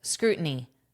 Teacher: American English will turn this into a flap T.